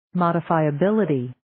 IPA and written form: ,mɔdifaiə'biliti (Modifiability)